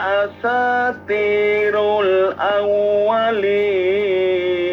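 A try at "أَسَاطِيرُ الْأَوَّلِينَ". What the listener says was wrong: hati-hati to jangan ganti ta Ya, jangan asatirul tapi asati.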